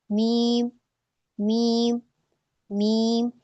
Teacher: दूसरा इसमें गुन्ना की सिफात पाई जाती है मीम के अंदर, जैसा कि मैंने आपको अभी बताया, तो जब आप मीम पढ़ेंगी तो आपकी साउंड इसमें नाक में को होकर जाएगी ना, मीम, नाक में वाइब्रेट होता है जब हम मीम को अदा करते हैं